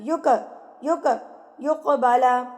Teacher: काफ जो है जब साकिन होगा तो काफ पर कलकला किया जाता है। उसको हिला के तरतराहट से अपने मखरज के साथ टक्कर खा के लफज़ वापस आएगा।